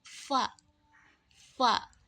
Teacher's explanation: huruf Fa ini keluar dari bibir bawah bertemu dengan ujung gigi atas